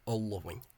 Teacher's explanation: the LL is preserved as a double L, all-loving. So much deeper and slightly longer.